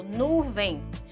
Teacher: Quando eu falo nuvem, não sai o sonzinho do I? Olha aí acontecendo a semivogal.